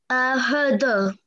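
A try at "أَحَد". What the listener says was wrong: Try not to say ahad. Ahad is sort of joining these two letters together. Try saying that.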